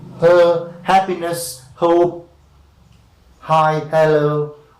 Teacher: The friction is happening inside the glottis